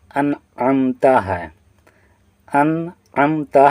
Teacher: ناک میں آواز کو نہیں پہنچائیں گے بلکہ ظاہر کر کے پڑھیں گے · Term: اظہار